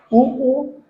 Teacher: होठों को एक वृत्त का रूप लेकर के ही आप उ का उच्चारण कर सकते हैं